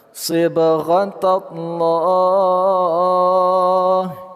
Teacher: Ba sukun berada di tengah kata, qolqolah sughro. Pantulannya kita sedikitkan saja. Lafaz Allah kita baca secara tebal atau tafkhim.